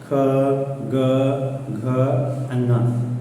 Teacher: जिह्वा है वो थोड़ी सी ऊपर साइड टर्न होती है, मतलब जिह्वा का जो पिछला वाला भाग है वो आपकी ऊपरी जबड़ा जो है उससे ऊपर थोड़ा सा टच करेगा या उसके पास में जाता है, तो उस बेस पे ये